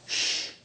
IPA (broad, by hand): ʃ